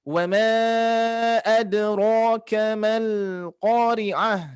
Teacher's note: Berikutnya hati-hati huruf qalqalah ada ya, ringankan. Ada ro, ro-nya juga ditebalkan karena dia fathah, tafkhim.